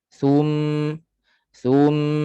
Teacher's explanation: pastikan satu harakat sahaja jangan jadi isyba apa dia Isba dia memanjang dia terpanjang lebih daripada satu harakat